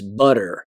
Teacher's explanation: with a softer T sound. So it sounds like a D instead of a T. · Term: lenition